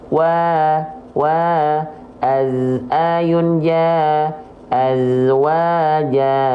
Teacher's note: Mad thi'i teman-teman teratur konsisten dua harakatnya enggak panjang kepanjangan enggak pendek kependekan tepat di dua harakat